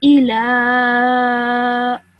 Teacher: Then you have a lam with a vertical fatha, and on top of that you have a mad saghir. So you stretch the sound of lam for at least 3 seconds.